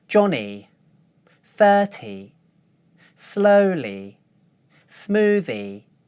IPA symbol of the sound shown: i